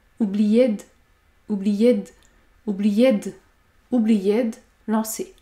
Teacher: la consonne D se prononce avec la voyelle qui se situe avant.